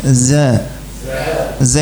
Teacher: Jadi kalau desis justru salah za enggak ada anginnya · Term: zai